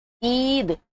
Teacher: جو اس میں یا آ رہی ہے وہ خوب کھینچ کر پڑھی جا رہی ہے، اور صاف پڑھی جا رہی ہے، صاف ظاہر ہو رہی ہے، کھینچ کر پڑھی جا رہی ہے. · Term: یا معروف